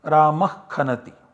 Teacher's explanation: this Visarga is substituted by a Jivhamuliya and you get Ramah Khanati as the output.